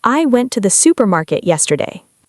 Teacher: The important words might be went, supermarket, and yesterday. >> The smaller words can sound much softer. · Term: stress